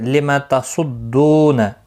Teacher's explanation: اہل الکتاب تا کے اوپر کھڑی زبر ہے، 1 الف کی مقدار کے برابر کھینچ کر پڑھیں گے. لما تصدون صاد مستعلیہ ہے، دو واو مدہ ہے، 1 الف کی مقدار کے برابر کھینچ کر پڑھیں گے. صاد پر پڑھا جائے گا.